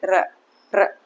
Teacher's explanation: हमारी जो जीवा है वो दो या तीन बार से अधिक कंपन करती है · जब आप र बोलोगे तो आपकी जीवा क्या होगी कंपन होगी जीवा में क्या होगी कंपन बोल के देखिए आप सीधा ऐसे